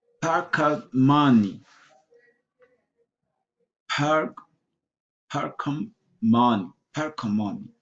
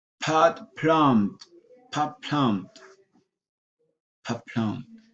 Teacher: T changed to P before M, B or P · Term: assimilation